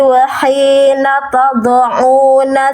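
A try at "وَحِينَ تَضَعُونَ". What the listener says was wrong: Tanya tipiskan. Jangan to. Ta wahina ta. Jangan to. Tado. ta, jangan kebawa tebal dotnya. Ya jadi si ta-nya udah ikut tebal, udah mulai ikut tegang. Padahal yang tebalnya dotnya. Wa hina tad'una, ta-nya tipis dulu. Kayak na, seringan na ta-nya. Nata wa hina tad'u, baru dotnya tebal ya.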